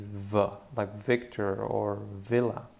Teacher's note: difference is that with the B you close your lips and with the soft pronunciation the lips do not close so therefore the sound that you create is v like Victor